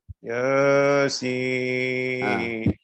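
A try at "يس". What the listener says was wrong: Ya-nya terlalu panjang. Ya-nya 2 harokat.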